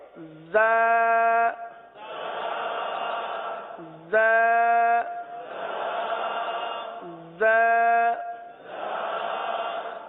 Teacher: جب ہم دونوں دانت بند کر لیں گے، جب ہم دونوں دانت بند کر لیں گے تو اب یہ دونوں کے کنارے پر زبان لگانا آسان ہو جائے گا۔ ویسے زبان زیادہ تر نیچے کی جانب رہتی ہے اور نیچے کی جانب رہ کر زا سیٹی کی آواز کی طرح اس حرف کی آواز نکلتی ہے۔